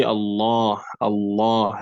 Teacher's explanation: you do the tafkhim, that is you make it heavy when what comes before it has a fatha or dhamma